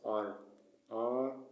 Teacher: The Amharic one or the Tigrinya is trill, but the English version is it's an approximant, so it's soft R, R, R.